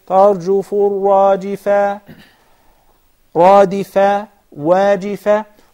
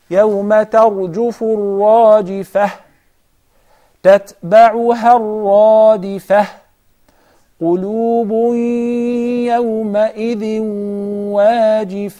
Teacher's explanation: every verse ended with the تاء مربوطة. And once we stop, it becomes a هاء.